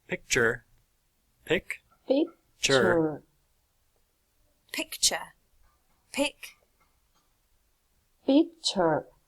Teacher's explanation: The upper lip articulates with the lower lip, producing a complete contact, so is therefore bilabial consonant.